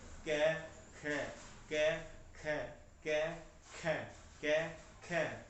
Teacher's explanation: जिह्वा मूल यस्य जिह्वा मूलम, जिह्वा मूल कौन से हैं? क और ख, ये जिह्वा मूल है जीभ से।